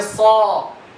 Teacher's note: The alif, you have to make it heavy because it's preceded by heavy letter.